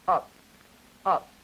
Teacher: Now please notice that the P phone or the member of this P family we're talking about that is final that is the one that is at the end as in a word like up is voiceless forest bilabial and a stop but unaspirated